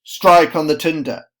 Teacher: it doesn't go an unstressed stressed it goes straight to stressed a strong sibilant strike